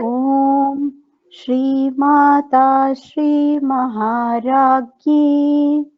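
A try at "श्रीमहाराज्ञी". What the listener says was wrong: Not gi, it is Ragni, Gni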